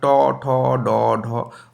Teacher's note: দেখো জীবটা ঠিক মূর্ধার উপরে আমাদের টাচ করছে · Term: মূর্ধন্য বর্ণ